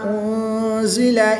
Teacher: نون ساکن کے بعد زا حروف اخفا میں سے ہے تو یہاں پر اخفا کریں گے، یعنی غنہ زمانی کر کے پڑھیں گے